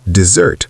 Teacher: Pronounced desert with stress on the second syllable.